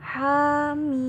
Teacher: jadi nggak boleh dengung, biasa aja hamim. Haknya 2 harokat.